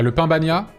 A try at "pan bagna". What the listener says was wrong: Le pan bagna, c'est P-A-N. Et beaucoup de gens confondent et disent pain bagna, mais